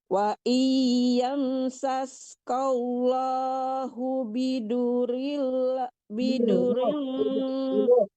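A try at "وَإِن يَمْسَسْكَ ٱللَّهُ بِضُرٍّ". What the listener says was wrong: rnya tasdid ditahan bidurin.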